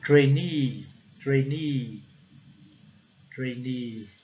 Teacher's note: muito destaque para a sílaba, né, final